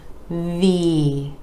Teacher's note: V V again that e vowel sound coming after the consonant where the top teeth are connecting with the bottom lip our vocal cords are engaging for the voiced V